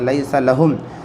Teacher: یا ساکن سے پہلے زبر یا لین ہو، نرم آواز سے پڑھیں گے